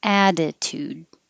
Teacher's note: these two t's change to a d